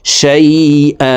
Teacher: প্রিয় দর্শক, এখানে যদিও হামজার উপরে দুই জবর আছে, এখানে দুই জবর থেকে এক জবর সরিয়ে ফেলে বাকি এক জবর রেখে এক আলিফ টেনে পড়ব। এই মতকে মধ্যে ইওয়াজ বলা হয়।